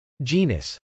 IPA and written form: dʒˈinəs (genus)